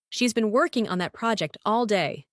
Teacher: The stress is on been working, project, and day. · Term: stress pattern